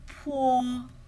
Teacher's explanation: we make a puff of air this is aspirated